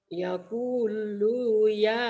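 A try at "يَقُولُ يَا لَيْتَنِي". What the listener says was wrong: Lu-nya pendek. Yaqulu ya. Yaqulu ya laitani.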